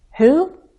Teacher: if I only use the question word I have one syllable so I glide